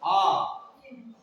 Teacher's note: आ खुल रहा है पूरा, है ना, ओपन हो रहा है पूरा मुख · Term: विवृत स्वर